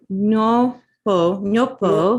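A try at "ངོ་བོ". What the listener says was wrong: no, back here. Say that. Don't use your tongue. Hold your tongue down. Nga. Nga.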